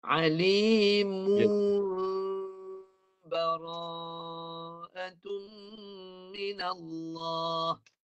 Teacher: tukar lafaz pada mim dengan dengung. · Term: iqlab